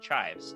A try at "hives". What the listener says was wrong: you put on the under potato. No C. Hives.